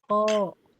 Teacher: Dia pangkal lidah, tapi enggak kayak udah ke tenggorokan gitu, enggak. Kalau yang geli itu udah ke tenggorokan, ya.